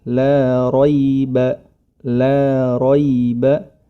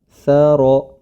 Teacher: Huruf ra pada kedua kata tersebut memiliki harokat fathah, maka harus ditebalkan ro.